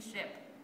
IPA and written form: ʃwept (swept)